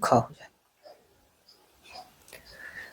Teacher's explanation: अघोष और महाप्राण दोनों का संयोजन ख में होता है